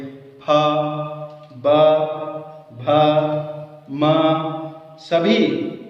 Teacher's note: ओठ दोनों स्पर्श हो रहे हैं, इसीलिए इनका उच्चारण स्थान है ओष्ठ, लिप्स